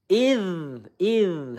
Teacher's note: Idz idz hati-hati ya dzal sukun ya makhrajnya ujung lidah kita menempel dengan gigi seri yang atas